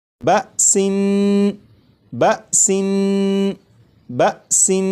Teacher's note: جب تنوین کی ادائیگی کروں گا تو نون کو پڑھتے ہوئے زبان تالو سے لگا کر پڑھوں گا